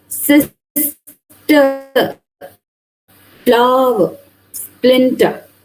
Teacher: you are paying more stress on the first part of the word rather than on the second part of the word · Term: trochee